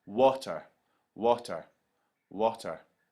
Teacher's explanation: you can hear that the W sound is more stressed there's more emphasis put on that first syllable than the second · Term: stressed syllable